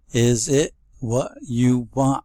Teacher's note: All swallowed T's on the end, glottalized.